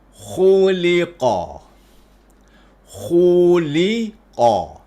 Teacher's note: Kha dengan qaf ni ketebalan dia sama sebab kedua-dua juga ada sifat infitah. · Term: tebal yang lapang